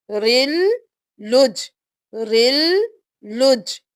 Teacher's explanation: اب لام ہو گیا رل کے ساتھ، پھر لام پیش جیم پہ تشدید ہے، جیم سے ملائیں گے لام کو جیم کے ساتھ، پہلے رو کو لام کے ساتھ ملایا، دوبارہ لام کو اپنی حرکت کے ساتھ پڑھ کر جیم کے ساتھ ملایا